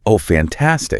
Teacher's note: The pitch totally drops. The delivery slows way down. The voice gets flat, maybe a little raspy or heavy.